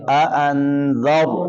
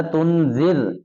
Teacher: را کو موٹا کر کے پڑھیں گے